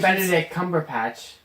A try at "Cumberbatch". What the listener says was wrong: Cumberbatch, not Cumberpatch. Cumberbatch. Batch. Batch.